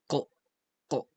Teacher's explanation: you put the back of the tongue close to the back of the mouth or uvula to make the kl, kl sound